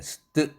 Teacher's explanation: 바로 스 다음에 트 다음에 반모음 R 사운드 또는 E라는 음성 환경입니다. 트는 우와 같이 스 다음에 오니까 당연히 무기음 뜨에 가깝게 unaspirated로 발음이 나는데